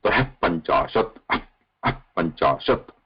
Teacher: So it remains a visarga, or when pronouncing it becomes like a half visarga. When we say Trayah Panchashat, you can say Trayah Panchashat with a visarga, or it becomes Trayah Panchashat, Panchashat, like that.